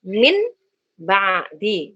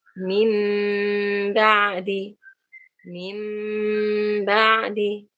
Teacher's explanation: rapatkan bibirnya. Mim, bibir atas ketemu bibir bawah. Mim dengan gunnah. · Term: iqlab